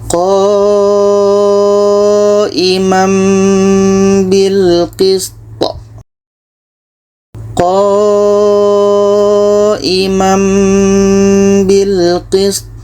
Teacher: Kalau ada mim kecil seperti ini itu bermakna hukumnya iqlab. Jadi bunyi tanwin ini kita tukar kepada bunyi mim dan di sini ada dengung. · Bunyi tanwin tukar kepada mim. Qooimamm imamm ah bunyi tanwin sudah enggak ada, kita pindahkan kepada mim.